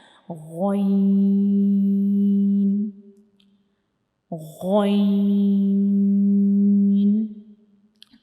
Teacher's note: गइन जो है इसको हम अपने गले के बिल्कुल ऊपर वाले हिस्से से पढ़ते हैं।